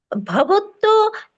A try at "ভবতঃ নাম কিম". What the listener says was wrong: ভবত উচ্চারণ হয়নি, ভবত উচ্চারণ হয়নি, তো বলতে হবে ভবতঃ, বিসর্গ হ উচ্চারণ হয়, ভবতঃ নাম কিম।